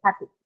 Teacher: the e sound that you hear in happy it is so short and so indistinct that you can't even hear it properly